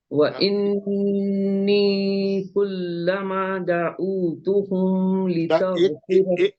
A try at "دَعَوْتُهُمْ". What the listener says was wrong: دعوتہم میں عین پہ پیش نہیں ہے دعوتہم پڑھنے کے لیے. یا لین ہے. ایک اس کے بعد کا میم اظہار شفیع ہے. دعوتہم پکڑ لینا میم کو.